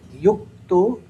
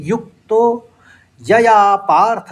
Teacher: युक्तों में क का आघात लेते हुए युक्तो दो बार क का उच्चारण आ जाएगा